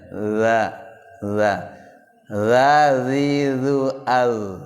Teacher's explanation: Dza itu agak di dalam aja lidahnya.